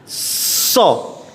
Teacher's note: Yang kedua, ketika dia mau mengucapkan, harusnya yang nampak dulu adalah ada desisnya atau ada angin yang lepas